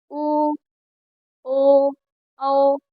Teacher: वृत्ता मतलब गोल। जिनका उच्चारण करते समय हमारा मुख गोल हो जाता है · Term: वृत्ताकार